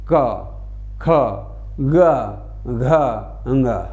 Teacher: ये कंठ से उच्चारण होता है और इसीलिए इनको कंठ वर्ण कहा जाता है